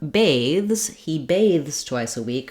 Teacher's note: For the verb bathes, he bathes twice a week, we only have the voiced th and the z sound. So there's no bathes option.